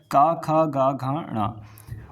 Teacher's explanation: सबसे पहले बात कर लेते हैं कंठ से उच्चारित व्यंजन। तो क वर्ग जो है वो कंठ से उच्चारित होता है।